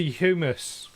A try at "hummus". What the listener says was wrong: Because HUM is hum. You don't say hume. We were huming this song.